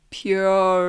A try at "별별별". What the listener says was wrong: No. You're giving it too many syllables.